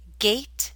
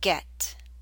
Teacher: the a in gate is longer